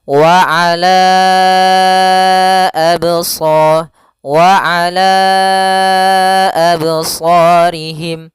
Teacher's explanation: kita panjangkan dulu lanya sepanjang empat harakat baru dibaca a